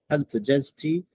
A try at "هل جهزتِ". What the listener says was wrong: Take your time. Take your time. That ha has a shadda on it.